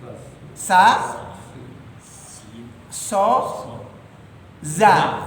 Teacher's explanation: Jadi si za itu ya, si za itu kelompoknya 3. Za, sa, so. Itu mahrajnya. Ya, jadi mahrajnya adalah gigi seri ya ujung lidah bertemu dengan gigi ke bawahnya.